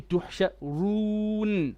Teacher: You have an extra gunna unless your nose is blocked.